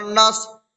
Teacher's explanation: صاد میں قلقلہ نہیں ہوگا کیونکہ صاد پر جزم تو ہے لیکن حروف قلقلہ میں سے نہیں ہے